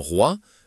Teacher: dans roi, la combinaison o i forme un son unique proche de wa